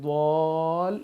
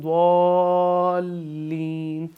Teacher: اب یہاں پہ مد ہے تو ہم اس لیے اس کو کھینچ کر پڑھیں گے ضال، اور لام کو جا کے کیونکہ لام پہ تشدید ہے تو اس کو ہم ملا دیں گے